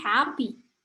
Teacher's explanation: kalau kita ngomong happy, kan itu hap-nya yang terdengar dan agak tinggi daripada p-nya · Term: stressing